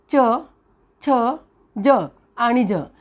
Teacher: या चार व्यंजनाचा उच्चार दोन प्रकारे होतो एक तालव्य आणि दुसरा आहे दंत तालव्य